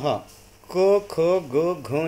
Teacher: उच्चारण केलं तर आपलं कंठातून येतो म्हणून कंठ्यह असं म्हटलं आहे